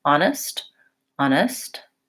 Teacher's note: you don't want to be too even across the two syllables and have a long clear vowel on the second syllable you really want it to be short so whether it's honest